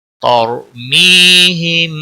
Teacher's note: ترمیہم طر را ساکن سے پہلے زبر ہے، را کو موٹا پڑھیں گے. می یا مدہ ہے، ایک الف کے برابر کھینچ کر پڑھیں گے.